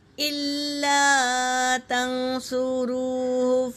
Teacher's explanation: اور نون ساکن کے بعد اخفا کے 15 حروفوں میں سے صاد آیا ہے، تو یہاں پر نون ساکن کا اخفا ہوگا۔ ناک میں آواز چھپا کر پڑھیں گے۔